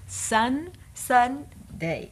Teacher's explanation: the N and the D your tongue is in the exact same place